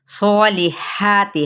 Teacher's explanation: हा बारीक रगड़ खाती आवाज़ के साथ